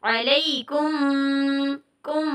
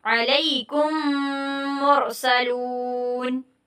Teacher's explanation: علیکم 2 میم تو نہیں پڑھیں گے, اکٹھا ہی ہم لوگ کیا مدغم کر دیں گے, یعنی ملا دیں گے